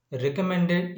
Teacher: this mend is accented or stressed, but not ed, but not the prefixes